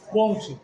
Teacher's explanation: porque o N tá nasalizando o som do O